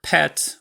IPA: pʰɛt